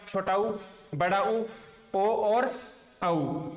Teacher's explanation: ओष्ठ स्वर जिन स्वरों का उच्चारण करने पर श्वास वायु है वो ओठों को स्पर्श करने के बाद मुख से बाहर निकलेगी।